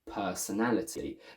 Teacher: The first per syllable is not the main stress, but it's the secondary one. So we keep the a full, long, single sound rather than personality with a schwa. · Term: secondary stress